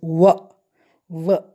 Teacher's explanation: There is a friction, there is the touching of the teeth ridge and the lips. So, there is some sort of a friction when we pronounce w. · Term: consonant sound